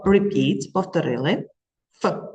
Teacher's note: Нижню губку прикусуємо верхніми зубками і кажемо ф